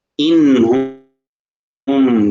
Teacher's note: یہاں پر غنہ نہیں ہے کیونکہ نون کے بعد ہا ہے، حرف حلقی ہے